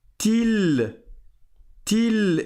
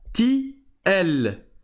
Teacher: Donc je passe du ta marbouta directement au lem. Et cette fois-ci, le lem, je le prononce parce qu'il n'y a pas de shadda après.